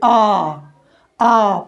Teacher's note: Opened का मतलब खुला हुआ। इसमें वायु का मार्ग पूरी तरह से खुल जाता है, यानी जिह्वा वायु को कोई बाधा नहीं पहुंचाती है। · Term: विवृत स्वर